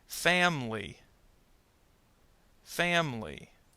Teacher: Notice the I in family disappears.